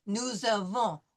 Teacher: The S is going to be like a Z.